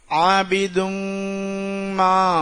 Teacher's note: நல்லா அழுத்தும் போது மூக்கால உன்னாவுடைய சத்தம் வரும் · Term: இத்ஹாமுடைய சட்டம்